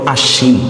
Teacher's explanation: ব ফলাটা উচ্চারণ হয় না, কিন্তু সটাকে একটু শক্ত করে উচ্চারণ করি আমরা